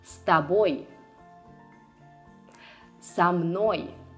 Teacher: In Russian, it's not common for a preposition to be emphasized. You're supposed to attach it to the word that follows and pronounce them as one word.